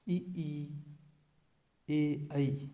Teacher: इनका उच्चारण तालु की सहायता से होता है। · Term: तालव्य स्वर